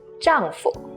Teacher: 丈夫. But notice the 夫 here has a neutral tone, which means it's brief and light. 丈夫. 丈夫 with no tone mark.